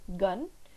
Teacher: the back of the tongue is raised your it is going to shut the air and complete closure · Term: plosives